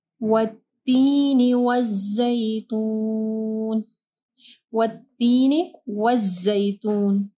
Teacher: دال نہیں پڑھنا، زیتون نہیں، زیتون زا ہے